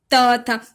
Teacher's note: त था जो प्रेशर होता है, जो जीभ का प्रेशर वो आगे की तरफ आता है, दांत की तरफ, इसीलिए हम इसे दंत कहते हैं।